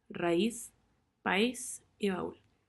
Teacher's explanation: una abierta más una cerrada tónica